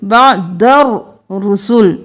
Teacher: الف اور لام کو نہیں پڑھنا دال کو رو کے ساتھ ملانا ہے